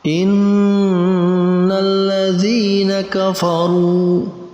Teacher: Di situ kita fokus pada huruf ra. Huruf ra dibaca dengan bacaan tafkhim atau tebal.